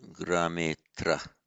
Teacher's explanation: If the next word begins with a short a, all that happens is the a drops. So grame atra becomes grametra.